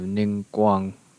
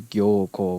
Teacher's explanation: the ng final consonant is borrowed as a long vowel in japanese so you have ning guang yin gongborg as gyoko with the